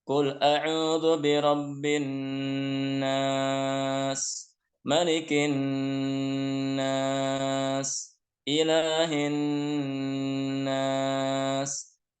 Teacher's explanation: di sini banyak nun tasydid. Jadi harus dibaca dengan dengung, ya dengan gunnah.